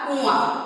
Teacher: अनुनासिक इसका मुख और नाक दोनों से ही उच्चारण होता है।